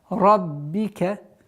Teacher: Ра твердая, каф, и уходим на мягкое произношение ба.